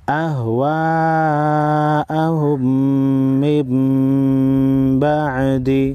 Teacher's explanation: نون ساکن کے بعد با ہے، نون ساکن کو میم میں بدل کر غنہ کے ساتھ ادا کریں گے